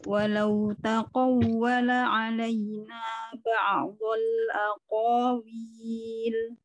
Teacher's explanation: Qaf itu jangan ketebelan juga ya. Jadi qaf itu dia isti'la aja. Gak perlu itbaq.